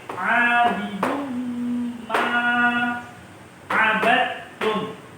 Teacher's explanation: Ini hukum bacanya idgham bi gunnah. Tidak boleh bacanya abidun ma, tapi bacanya langsung dimasukkan ke huruf mim.